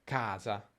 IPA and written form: ˈka:za (CAsa)